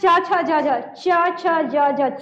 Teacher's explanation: च भी बोलते हैं तो जीभ सीधे-सीधे तालु में स्पर्श हो रहा है। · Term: तालव्य वर्ण